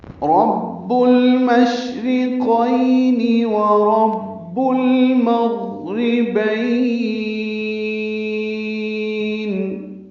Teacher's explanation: شین ساکن پہ ہمس اور تفشی ہے، آواز منہ میں پھیلتی ہے، سانس جاری رہتی ہے